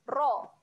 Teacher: Seterusnya rasu, okey, ra dibaca dengan tebal.